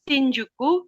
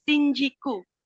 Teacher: Lalu kata ju cenderung berubah menjadi ji. Contohnya itu shinjuku menjadi shinjiku.